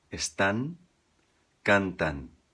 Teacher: acaba com a língua no céu da boca bem pertinho dos dentes de cima